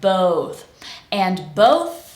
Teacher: we finish with tongue between the teeth we're blowing air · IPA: θ